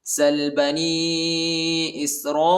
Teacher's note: را کے بعد جو الف ہے اس الف پر بڑا مد آیا ہے اس کو تقریباً 3-4 سیکنڈ تک کھینچیں گے